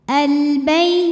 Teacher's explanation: Nah, kemudian al-nya ini alif lamnya alif lam qamariah. Karena alif lam menghadapi huruf qamariah yaitu ba, maka lam sukun dibaca jelas · Bay harfulin atau huruf lin karena ya sukun didahului fathah, maka dibacanya lembut.